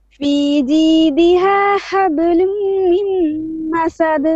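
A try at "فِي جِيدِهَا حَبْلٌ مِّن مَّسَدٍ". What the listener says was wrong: Again, mim shadda. Hablum mim masad.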